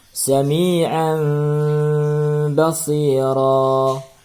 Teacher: bunyi nun mati ataupun bunyi tanwin berubah menjadi bunyi mim mati dengan dengung selama 2 harokat. Yaitu ketika kita membunyikan mim mati, suara kita tahan 2 harokat, suara dengung. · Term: hukum iqlab